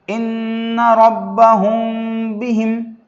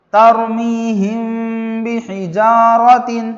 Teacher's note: اس مثال میں میم ساکن کے بعد با آیا ہے، اس کو اخفاء شفوی کہتے ہیں، اور میم ساکن کے بعد با آنے کی وجہ سے غننے کے ساتھ اخفاء ہوگا۔